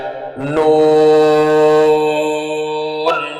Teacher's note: জিহ্বার আগা তার বরাবর উপরে তালুর সঙ্গে লাগাইয়া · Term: ৯ নম্বর মাখরাজ